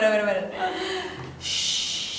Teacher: Jadi kita harus semacam sedikit whistle. Iya. Ada mendesisnya dikit. Kayak ular.